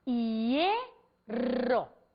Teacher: se eu falo hierro, o acento prosódico está na vogal E. Portanto, diante de I, diante de HI formando ditongo, eu posso ter Y.